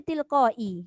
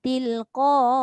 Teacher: Ketika waqaf huruf Hamzah dimatikan sesudah membaca panjang huruf sebelumnya.